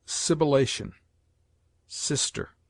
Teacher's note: S has a hissing sound